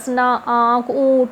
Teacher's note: नाक और मुंह दोनों का यूज हो रहा है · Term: अनुनासिक